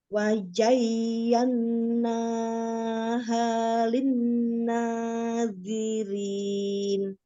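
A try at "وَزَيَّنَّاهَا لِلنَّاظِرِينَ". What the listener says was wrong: Itu malah lebih terlalu panjang untuk dua harakatnya ya. Wazayyannaha linnazirin gitu.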